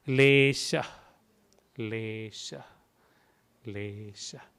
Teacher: S with the mark on the top. So flat tongue and the sound sh.